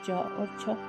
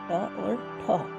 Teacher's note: हर वर्ग के 2 अक्षर, पहले 2 अक्षर जैसे कि फर्स्ट और टू हमारे अघोष कहलाते हैं।